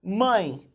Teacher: O som, embora esteja com a letra E, o som é de I.